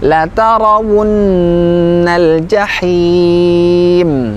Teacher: Mengucapkan huruf gunnah kita sempurnakan lebih panjang dari mad tabi'i.